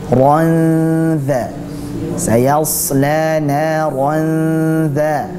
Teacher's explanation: Itu adalah bacaan ikhfa. Bersiap-siap ke makhraj huruf dzal.